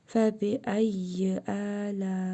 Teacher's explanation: Ləm əlif. Burada məddi muttasıl qaydasıdır. Ləm əlifi 4 əlif miqdarı uzadırıq.